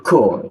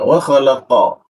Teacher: Tapi huruf qo itu tidak ada desisnya.